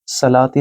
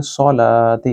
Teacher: سلاتی نہیں بولیں گے، سو بولیں گے، سولاتی کیونکہ یہ صاد ہے